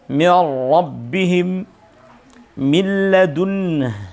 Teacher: Hurufnya maupun sifatnya tidak tersisa sedikit pun dari huruf nun yang ada pada sebelumnya atau tanwin itu. · Jadi min karena ketemu lam sehingga meleburnya itu berubah, nun berubah menjadi huruf lam sehingga hukumnya seakan-akan lamnya menjadi lam tasydid. Sebagaimana ra ketika nun sukun atau tanwin bertemu dengan huruf ra maka melebur atau menyatu sehingga karena menyatu dari dua menjadi satu sehingga hurufnya nun atau tanwin berubah menjadi huruf ra. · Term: idgham kamil